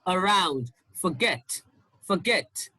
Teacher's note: now the stress is on the second syllable